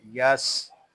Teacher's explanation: सीन हरूफ सुफीरिया में से है, इसमें सीटी की आवाज़ आएगी।